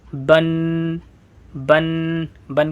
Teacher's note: نون کی طرح آواز ناک میں جائے گی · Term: تنوین